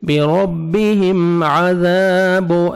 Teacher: الف مدہ 1 سیکنڈ آپ نے زال کو کھینچنا ہے